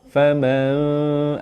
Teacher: Faman, lidah mendatar saja pada masa yang sama. Bibir kita dah nak ready sebut fa, bibir bawah dah letak kat gigi atas. Dah nak ready sebut fa, tapi tak sebut fa lagi. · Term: dengung sengit